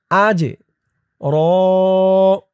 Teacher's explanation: আজ হামজা দিয়ে জিম ধরবে, জিম কলকলার হরফ, আজ র, এই তো চিহ্ন হতে অক্ফ করার কারণে র এখানে এক আলিফ টান হবে, দুই জবর থেকে এক জবর রিমুভ হবে।